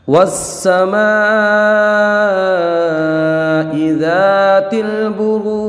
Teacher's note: بروج میں ہم نے 3 الف تک کھینچ کے لے گئے، ہمیں پتہ ہے مد عارض کو 3 الف تک کھینچ سکتے ہیں۔ پھر ہم نے جیم میں ایک قلقلہ بھی کیا جماؤ کے ساتھ